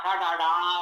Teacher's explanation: टवर्ग का टाठा डाढ़ा बोलेंगे तो जिह्वा मूर्धा पर स्पर्श करती है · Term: मूर्धा स्थान